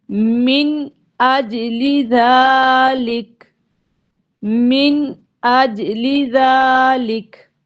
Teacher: تو یہاں پر حمزہ آ گیا ہے تو ہم یہاں پر غنہ نہیں کریں گے بلکہ نون کو ظاہر کر کے پڑھیں گے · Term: اظہار